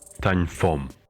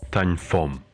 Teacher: the sound O is reduced to U or a schwa, and the E sound is reduced. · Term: vowel reduction